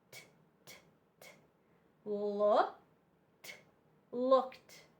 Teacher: the Ed D sounds like a t